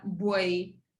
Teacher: in Porto we say we say the v's as B's so it'sa boy and in Lisbon is V is a v